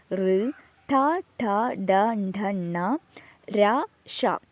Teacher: മൂർധാവ് ഉപയോഗിച്ച് പ്രൊഡ്യൂസ് ചെയ്യുന്നതാണ്